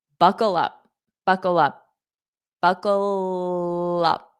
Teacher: So, notice how I hold out that dark L. Buckle up. And then I pronounce the up.